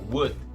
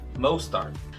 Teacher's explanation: A gente para de falar logo no início da pronúncia do D. Você encosta a língua no céu da boca para falar e para.